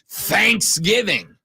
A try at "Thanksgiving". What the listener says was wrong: It should not be. It should be on the giving.